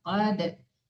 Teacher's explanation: Jangan qad mati total ya. Ya dal huruf qalqalah.